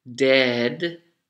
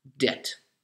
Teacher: the vowel sound, the E, is also much longer when you have died, dead, as opposed to when you owe people money, debt, very short vowel